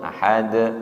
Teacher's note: Tidak ditahan, langsung ahad mantul nggih. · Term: qalqalah wusta